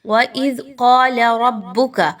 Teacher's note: ذال کو سب سے پہلے آپ نے نرمی سے پڑھنا ہے، زا کی طرح سختی سے نہیں پڑھنا، سیٹی کی آواز کو اس میں نہیں لانا